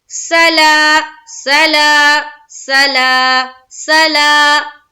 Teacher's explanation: یہاں دیکھیے سین زبر سا، جلد ادا کریں گے. لام کھڑا زبر لا، ایک الف کے مقدار کے بقدر کھینچنا ہے